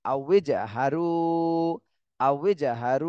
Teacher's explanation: রুতে এক আলিফ টান দিতে হবে, মদের হরফ